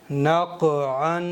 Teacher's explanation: काफ का मखरज है ज़बान की जड़, ऊपर के तालु के नरम हिस्से पर लगाने से काफ अदा होता है। तो ज़बान की जड़ को ऊपर के तालु के नरम हिस्से पर लगाएंगे।